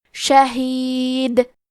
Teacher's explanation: ہم یہ کلمہ پہ رکیں گے تو دال پہ جزم سے رکیں گے، لہذا یہاں دال کا حکم ہوگا قلقلہ، تو ہم یہ حرف کو ہلاتے ہوئے یہ کلمہ کو پڑھیں گے۔